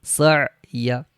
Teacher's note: عین ساکن ہے تو عین کے اوپر آواز رکنی چاہیے۔ سین عین زبر سع، یا زبر یا، سع یا۔